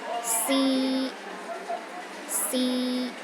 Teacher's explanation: The first tone is high and steady.